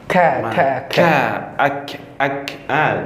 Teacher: Dia di pangkal lidah. Ya. Sedikit ke depan.